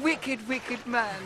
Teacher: that's a british e with a scottish ick so rather than wicked it's wicked when you're doing a hybrid